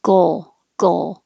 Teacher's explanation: So I can make my tongue make the G at the same time the front is making the L